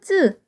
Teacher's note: 목을 좀 쥐어짜면서 공기 양을 줄여서 힘들게 발음되는 소리를 퍽퍽하다 해가지고 된소리라고 해요